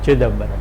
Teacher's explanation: Some languages, such as Tamil, for example, allow stress only in the word initial position, such as if you have a word such as in Hindi we pronounce it is pronounced as Chidambaram, but a Tamil speaker will pronounce it with stress on the first syllable, something like Chidambaram.